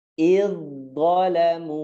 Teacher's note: Jadi dha-nya itu di belakang gigi persis, da-nya itu di bawahnya. Jadi di bawah, dari bawah naikin ke atas.